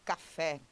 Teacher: As palavras oxítonas, como é o caso aqui de café, elas são oxítonas por quê? Porque quando você pronuncia, o fé aparece com mais força e aberto.